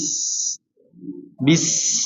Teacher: Snya kurang di panjangin lagi, kurang dilamain.